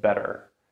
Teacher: the second one is flap T. This in American English sounds like d.